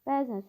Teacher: bəzən sözündə uzanma hadisəsi var və vurğu sonda deyil